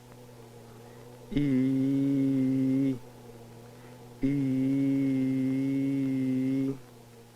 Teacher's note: by the effects of adjacent nasal consonants on vowel sounds during the vowel e the velopharyngeal port would generally be closed